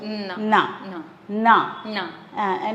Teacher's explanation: அந்த நாவை நுனி நாக்கு கடிச்சு தான் உச்சரிக்கணும்